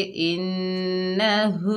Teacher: इन नून के ऊपर ज़बर बगैर खींचे पढ़ेंगे ना। हा के ऊपर उल्टा पेश है, एक अलिफ की मिकदार खींचकर पढ़ेंगे, हा सीने से अदा करेंगे इन्नहु। हा के ऊपर पेश है, बगैर खींचे पढ़ेंगे हु।